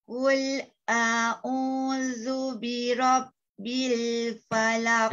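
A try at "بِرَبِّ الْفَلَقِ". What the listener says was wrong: Jangan birabbil. Banyak tu. Birabbi. Birabbi. Bukan birabbi. Banyak. Nak birabbi.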